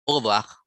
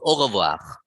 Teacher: So the R in French is at the back of your mouth. The tongue is rolled at the back of the mouth, not like English. The our tongue is on top in front, yeah, and then the French is at the back. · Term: R sound